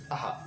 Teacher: अ नंतर आपण ह म्हणतो बघा, उच्चार चढ येतो बघा, आहा. म्हणजे काय ते स्वर आणि नंतर पुढे व्यंजन येतं ह असं. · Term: विसर्ग